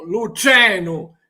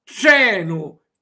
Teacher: no es un TR como en español, tren, sino se pone esta lengua con la punta que toca el paladar